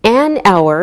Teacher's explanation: We say an hour because we don't pronounce the h. So, it sounds like a vowel sound.